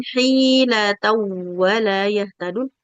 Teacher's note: Hi, hanya panjang, lamnya pendek.